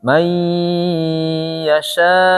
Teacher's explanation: Kalau berhenti, maka mad wajib masuk ke 6 dia. Berhenti. May yasha gitu.